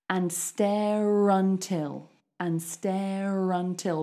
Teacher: it's not a vowel to vowel link it's an R to vowel link